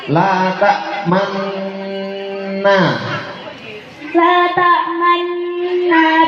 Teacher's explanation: bacaan ismam artinya bibir mencucu di tengah-tengah dengung sebagai isyarat bunyi rumah.